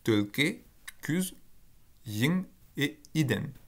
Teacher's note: vous avez que des voyelles antérieures dans la racine qui précède